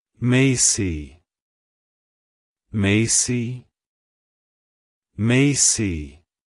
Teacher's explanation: to pronounce it correctly emphasize the first syllable May and end with aof Soft C Sound avoid emphasizing the why